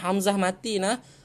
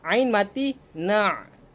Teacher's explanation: Hamzah hanya laluan, tiada sekatan. Ain laluan, ada sekatan.